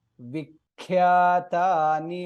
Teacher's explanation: kha is mahaprana there, it is half kha